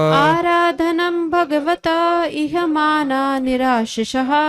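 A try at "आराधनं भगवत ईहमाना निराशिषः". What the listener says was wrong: यह नहीं है, ई है, ई है।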